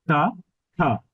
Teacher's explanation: অল্পপ্রাণ বা মহাপ্রাণ ধ্বনির জন্য বাতাসটা আমরা যে বাতাসটা একটু কম বের হচ্ছে বা একটু বেশি বের হচ্ছে